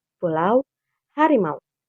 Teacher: Pada kata-kata tersebut, AU diucapkan dalam satu tarikan napas sebagai satu suku kata, bukan sebagai dua vokal terpisah. Ketika melafalkan diftong AU, pita suara berada dalam kondisi bergetar secara terus-menerus, karena kedua vokal A dan U adalah bunyi bersuara. · Klasifikasi bunyi diftong AU termasuk dalam diftong menurun, karena suara vokal pertama lebih kuat daripada suara vokal kedua. Terdiri dari vokal A terbuka vokal penuh, yang diikuti oleh U semi vokal belakang.